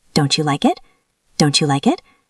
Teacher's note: When T meets Y, they make a ch sound like cheese or church. · The T and the Y combine. Don't you becomes don't you?